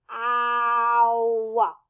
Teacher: so it starts open and then it closes